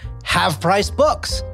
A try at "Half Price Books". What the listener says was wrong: No, it's not Have Price Book. It's half. It's half. H-A-L-F. Half Price Books.